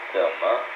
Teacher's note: the third tone and the light tone